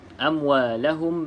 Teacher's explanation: mim ada tanda mati bermaksud izhar. Bila sebut izhar, kita tidak boleh baca dengan dengung